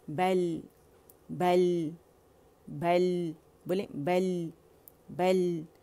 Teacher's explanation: لام کا توسط شو کریں گے، اس کی آواز بین بین ہے، کیونکہ شدہ اور اس کی جو صفت لازمہ ہے توسط ہے اس کے اندر.